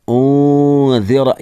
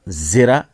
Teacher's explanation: انذرا یہاں بھی اخفا ہوگا، اور ذال ہے تو ذال جو ہے وہ زبان کی نوک کو دونوں دانتوں کے درمیان رکھیں گے. زرا نہیں پڑھیں گے.